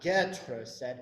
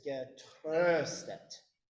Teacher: with this particular word, the stress is on the second syllable. It's not getröstet, it's getröstet.